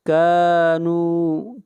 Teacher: کاف کو کھینچ کر پڑھیں گے ایک الف کے برابر، مد اصلی ہے۔